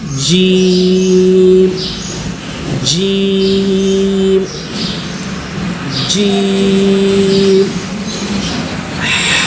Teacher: بیچ زبان تالو سے مل کر جیم ادا ہوتے ہیں